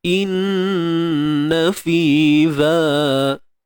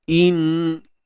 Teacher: Jangan panjang in, jangan buat bunyi in. Terus gunnah dengan sempurna.